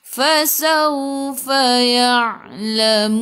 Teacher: Lamun sebelum huruf akhir ada waw yang tak ada baris ma'aril sukun, boleh baca 2, 4 atau 6 harakat. Matikan dengan huruf nun, hujung lidah menyentuh gusi atas.